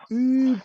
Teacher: Sí, la U francesa suena Y. Es una U, pero cerradita, como si cerrásemos la boca, sonaría un Y.